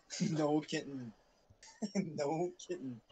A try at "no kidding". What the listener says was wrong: Yeah, no kitten. Nothing about a kitten. I think you're trying to say no kidding, but you're saying no kitten.